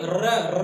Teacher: आपको देखिए लुंठित या प्रकंपित, जैसे हम लोग देखिए र कहते हैं ना, तो प्रकंपित होता है ना, लुंठित मतलब ऐसे मुड़ के कंपन करता है र, तो उसके वजह से लुंठित या प्रकंपित कहते हैं।